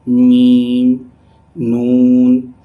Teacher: When we produce Meem and Noon, the voice automatically travel through our nose and nasal. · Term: nasal activity